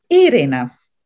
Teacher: in latvian my name should be pronounced with stressed on the first syllable